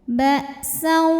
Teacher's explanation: Maka tanwinnya masuk ke waw disertai bunyi dengung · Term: idgham bi gunnah